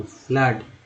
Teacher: फ्लड में double O का उच्चारण क्या हुआ तो आ के रूप में